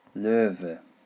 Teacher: the W pronounced as a V sound